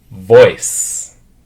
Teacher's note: the difference is that the vah has the vibration in your throat so like to put your hand here and try to feel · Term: V sound